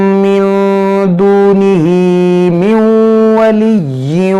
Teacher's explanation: नून साकिन के बाद वाव है तो यहाँ पर इदगाम करेंगे